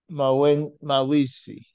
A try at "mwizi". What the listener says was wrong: Mwi. Mwizi. No, we say mwi, not ma. Mwizi, mwi. Okay, what you do is that you bring a letter, you introduce a consonant between the letter M and W. With letter M and W is pronounced as mwa, mwa. So we say mwizi. Mwizi. Mwizi.